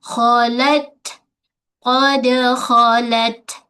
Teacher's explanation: Khala, lam tepi hujung lidah menyentuh pada gusi gigi atas. Pada ta kita tahan dulu suara syiddah, kemudian baru lepaskan hams, angin. Khalat, tu tahan, kemudian lepaskan untuk meringankan bacaan.